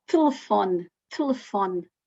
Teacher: quando as vogais são átonas, elas reduzem, ficam mais fechadas. Quase que não as dizemos